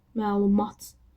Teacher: Məlumat sözündə ə uzanır · Amma vurğu sonuncu hecaya düşür